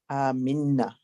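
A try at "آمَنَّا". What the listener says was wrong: Excellent. Aminna. Brilliant.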